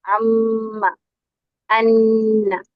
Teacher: نون اور میم کا غنہ جب ہم پڑھتے ہیں ام ان، وہ ناک سے ادا ہوتے ہیں